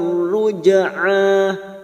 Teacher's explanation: jim sukun, qalqalah, sugra yang mati asli di tengah kalimat jangan lupa dipantulkan